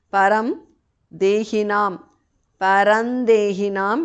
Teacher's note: Anuswara changes to nu there.